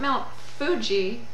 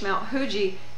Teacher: it's not an F it's not really an H Mount Hui it's a very rounded H that sounds a little bit like an F